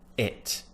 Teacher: my tongue is pushed up to the top of my mouth but it's not right at the top it's just near the top